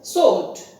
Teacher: It comes only in the spelling, but it is pronounced as sword. W, the sound W is dropped.